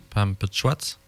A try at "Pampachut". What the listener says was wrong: C'est les Pampachut. Tu vois, le A ne se prononce pas, là, la voyelle A. Pampachut. PM, Pampachut.